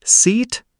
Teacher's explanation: Hold that t at the end of seat.